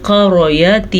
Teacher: را بھی موٹی پڑھیں گے کیونکہ را پہ زبر ہے۔ ان دو حروف کو پر پڑھا جائے گا، قاف ہمیشہ ہی پر پڑھا جائے گا۔